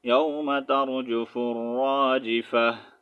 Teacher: یہاں پر تا کا ساؤنڈ وقف کی صورت میں ہا میں چینج کریں گے، ٹھیک ہے. اگر وقف کریں گے تو اس کا ساؤنڈ ہا میں چینج کریں گے، ٹھیک ہے.